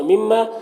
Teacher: فکلو لو میں واو مدہ ہے، ایک الف کے برابر کھینچیں گے. مما میم مشدد غنہ ہوگا اور الف مدہ ہے، ایک الف کے برابر کھینچیں گے